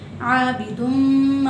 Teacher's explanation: اسے ہم ایک الف کی مقدار کھینچ کر پڑھیں گے، عابدم۔ اور اگلا جو حرف ہے اس میں غلطی کی جاتی ہے، کچھ لوگ عابد تم کو، پہلی غلطی جو کی جاتی ہے وہ عین کو واضح نہیں کرتے کچھ لوگ، یعنی کہ عبد تم پڑھ دیتے ہیں، تو عین کو واضح کرنا ہے ہم نے عابد تم، عابد تم۔ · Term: الف مدہ